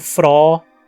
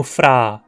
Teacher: é pronunciada por alguns falantes como [frɔː] e por outros como [fraː]